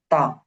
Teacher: তায়ের উচ্চারণটা হলো যে, আমি বড় করে দিই। জিহ্বা আগা সামনে উপরের দুই দাঁতের গোড়ার সঙ্গে লাগিয়ে উচ্চারিত হয়। জিহ্বার আগা সামনের উপরের দুই দাঁতের আগার সঙ্গে লাগিয়ে উচ্চারিত হয়।